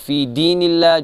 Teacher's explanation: اللہ کو باریک پڑھیں گے چونکہ یہاں پر ترکیق ہے